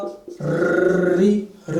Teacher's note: री में तो पूरी जीभ ही क्या कर रही है, कंपन कर रही है ना